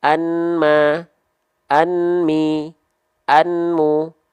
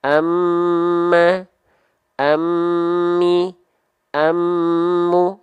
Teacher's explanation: fathain an bertemu dengan huruf wau atau bertemu dengan huruf mim maka bunyiannya dimasukkan ke huruf mim · Maka bunyi an-nya dimasukkan ke huruf mim. Enggak lagi kita baca anma, anmi, anmu.